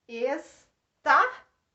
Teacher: Si é a mais forte e ela é a antepenúltima. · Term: Proparoxítona